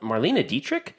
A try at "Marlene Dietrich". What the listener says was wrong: It's not Marlena, it's Marlene. No, I'm just saying the pronunciation isn't Marlena, it's Marlene.